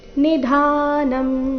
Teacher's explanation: ಎಲ್ಲ ಅಕ್ಷರಗಳು ರಸ್ವ ನಿಧಾನಂ ಧ ಮಾತ್ರ ದೀರ್ಘ